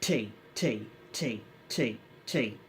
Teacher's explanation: your tongue touches the palate of your mouth the top part your mouth your palate and it bounces down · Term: letter T